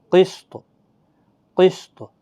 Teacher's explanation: اسی طرح سے قسط، وقف جائز کی نشانی. قسط، تو پر قلقلہ بھی ہوگا